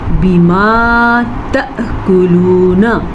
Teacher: ہونٹ بند ہو جائیں گے اور غنہ ادا ہوگا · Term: اخفاء شفی